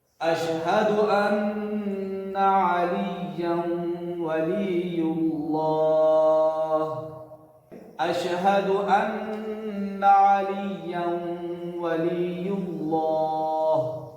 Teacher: غننے کی آواز باقی رہے گی, اس لیے کہ واو ہے تنوین کے بعد